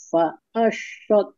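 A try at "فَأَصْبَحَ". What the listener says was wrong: itu masih shin. coba coba lidahnya bagian pangkal itu dinaikkan, Bu. Fa'asbaha yastals. Berarti dicari lagi huruf sodnya ya, Bu ya.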